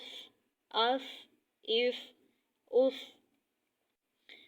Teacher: ٹھیک ہے، سین میں سیٹی کی آواز آنی چاہیے اور سین کو باریک ادا کیا جائے گا۔ صاد، صاد موٹے حرف میں سے ہے اس لیے اس کو پر کر کے پڑھیں